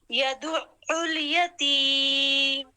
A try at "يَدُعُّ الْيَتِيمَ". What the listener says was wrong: اب فاصل بہت زیادہ ڈال رہی ہیں. دیکھیں یا دو ایسے ہم نے بیچ میں الف نہیں ڈالنا.